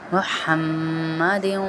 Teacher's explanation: یہ باریک ہا ہے، ہمارے حلق سے نکلے گا